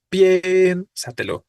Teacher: que acentuar piénsatelo no ahí justo tenemos dos vocales consecutivas Pero sabemos que la tónica es la e · sabemos que la tónica es la E, porque decimos piénsatelo, no piénsatelo, ¿no?